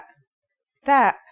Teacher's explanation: the pronunciation is like the English T except you should release your breath with a strong burst of air